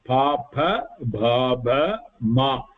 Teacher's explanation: All this sound will come only by the lips coming together. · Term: oshtau